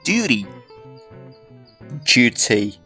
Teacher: When we take the word duty, in Great Britain, this word can be pronounced with a y sound, but it's also commonly pronounced with a j sound. This change from y to j is called yod coalescence.